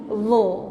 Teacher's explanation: Dia za, lidah hujung gigi kan. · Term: huruf za